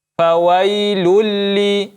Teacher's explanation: idgham yang kita tidak gunnahkan, tidak ada gunnah di dalamnya. Fawailulli, ya, tidak dibaca fawailulli, ya, tapi langsung dijelaskan huruf lam yang kedua. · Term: idgham bila gunnah